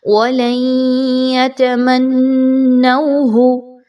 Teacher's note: یاد رکھیے آواز ناک میں بھی جانی چاہیے، ادغام مع الغنہ۔ وَلَن يَتَمَنَّوْهُ، ملا دیا ہم نے لام کی آواز کو یا کی آواز کے ساتھ، اسی کو ادغام کہا جاتا ہے۔